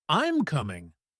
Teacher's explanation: when we make a statement like, I'm coming, it goes down. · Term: Falling tone